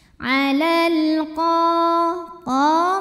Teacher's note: alif lam menghadapi huruf qamariyah yaitu qaf, maka lam dibaca jelas. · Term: alif lam qamariyah